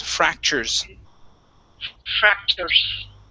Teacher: we switch that T to sort of like a CH or SH type sound. Instead of saying fractures with the T, it's churs.